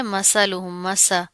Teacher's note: سا بغیر سٹی کے ادا ہوتا ہے